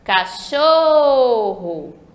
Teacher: a sílaba show é a sílaba tônica sílaba mais forte da palavra cachorro